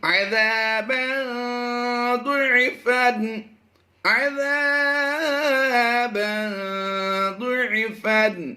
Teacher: یہاں پر تنوین کے بعد ضاد ہے حروف مستعلیہ سے اور حروف اخفا میں سے بھی ہے، تو یہاں پر ہم نے ضاد حروف مستعلیہ کی وجہ سے پر کرنا ہے، اور یہ زیر جو اس کلر کے ساتھ میچ کی ہے یہ اخفا کا کلر ہے، یعنی یہ یہاں پر اشارہ ہے کہ اخفا بھی کرنا ہے۔